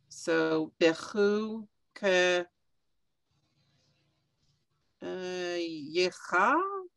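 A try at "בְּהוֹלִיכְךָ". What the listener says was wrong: No, that yud is silent. You that don't see yud after an ev very often, but it's silent.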